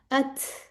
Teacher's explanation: अगर आप बोल के देखें ना अथ, आपको सांस फील होगी, आपके होंठों के आगे हाथ रख के देखें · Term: हम्स